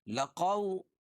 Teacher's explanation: واو ساکن سے پہلے زبر ہو تو واولین ہوتا ہے، اس کو نرم آواز کے ساتھ جلدی پڑھتے